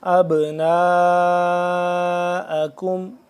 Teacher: اب پہ کریں گے قلقلہ اور اس کو لمبا کریں گے مد کی وجہ سے